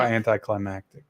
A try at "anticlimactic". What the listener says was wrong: You've always put a C in there.